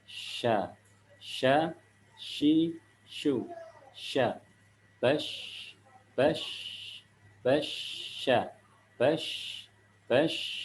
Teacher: Ketika bash, itu kita angkat lidah kita cuman nggak sampai nempel. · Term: huruf shin